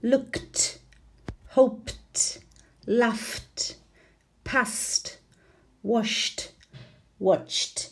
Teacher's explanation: ED is pronounced t, t, t. After verbs ending in these unvoiced sounds.